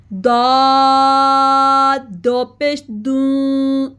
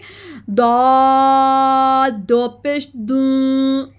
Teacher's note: جو زبان کا جو حافہ ہوتا ہے، اوپر آپ نے داڑوں کی جڑ سے لگانا ہے. خوب اس کو آپ نے ہیوی ساؤنڈ میں ادا کرنا ہے اور منہ کھول کے دا دو پیش دوں. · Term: زبان کے حافہ